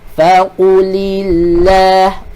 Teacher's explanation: Ni nipis. Sebab sebelum kalimah Allah dia berbaris bawah.